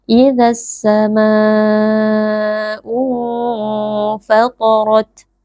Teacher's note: Huruf ta dengan huruf ra, dua-duanya huruf tebal, dibaca dengan mengangkat pangkal lidah. Kemudian saat kita membaca huruf ta sukun, kita berikan sedikit hembusan nafas.